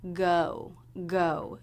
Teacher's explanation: G consonant sound and the O as in no D thong sometimes my students don't round their lips enough for the second half of this diff thong